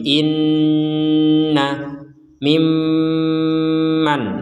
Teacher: jadi dengungnya adalah 100% di rongga hidung